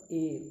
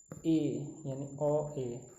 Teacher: अ और ये ई मिलाओगे ना तो हो जाएगा ए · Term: संयुक्त स्वर